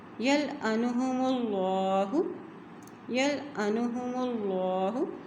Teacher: جب بھی اللہ کے نام سے پہلے زبر اور یا پیش آ جاتی ہے تو اللہ کا نام موٹا ادا کیا جاتا ہے